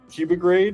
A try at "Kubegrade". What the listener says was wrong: Well, it's pronounced cube grade. A lot of people see the logo and they say cub grade like I guess cubernatti but there's no r so it's just cube grade.